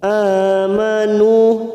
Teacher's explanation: nu dhamma bertemu wawu sukun 2 harokat kita panjangkan.